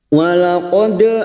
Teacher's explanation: dal sukun yang mati asli di tengah kalimat qalqalah sugro, jangan lupa dipantulkan